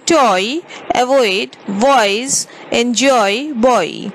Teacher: the glide begins in the position for o o moving up and forward towards e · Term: closing diphthongs